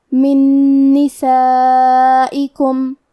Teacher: ادغام کا معنی ہے حرف کو حرف میں داخل کرنا تو ہم نون ساکن کو دوسرے نون میں ملا کے ایک ہی نون غنہ اور تشدید کے ساتھ پڑھیں گے